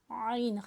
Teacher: आइन हलक के दरमियान वाले हिस्से से